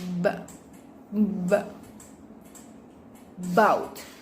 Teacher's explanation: With manner of articulation, stopped, and place of articulation, bilabial.